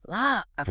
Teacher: When a singular feminine noun starts with a stressed A or ha sound like an agua or águila, eagle, saying, la agua makes the two A sounds run together awkwardly